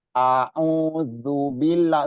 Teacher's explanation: A tempatnya di tengah-tengah tenggorokan, balik lagi ke makhrajnya. Jadi dari sini dari bawah ke tengah-tengah.